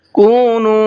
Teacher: واو ساکن سے پہلے دونوں جگہ پر پیش ہے، کو میں بھی اور نو میں بھی، تو دونوں کو کھینچ کر کے پڑھنا ہے۔